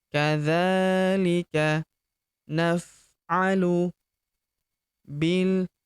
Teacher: huruf bi langsung lompat masuk ke huruf lam yang berharakat sukun langsung masuk ke sini alifnya tidak dibaca atau dianggap tidak ada. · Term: hamzah wasal